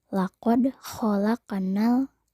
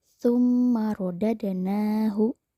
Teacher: Kata qad dan khalaq itu merupakan contoh qalqalah sugro. Huruf dal dan qaf berharokat sukun, maka dibacanya memantul, kecil atau tipis. Contoh lain di ayat 5.